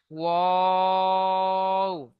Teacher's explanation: 14 নম্বর মাখরাজ, দুই ঠোঁট না মিলিয়ে মাঝখান হতে উচ্চারিত হয়।